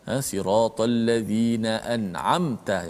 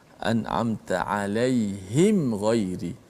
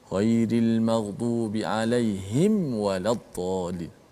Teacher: hendaklah kita baca dengan jelas matinya izhar itu, mim mati tanpa dipanjangkan gunnah tersebut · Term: izhar syafawi